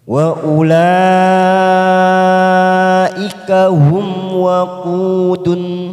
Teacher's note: Ada huruf mim sukun bertemu waw, namanya idhar safawi, kita baca jelas tanpa mendengung.